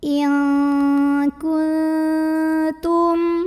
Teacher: nun sukunnya dibunyikan samar-samar disertai dengung, tapi dengungnya sedikit aja. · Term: ikhfa aqrab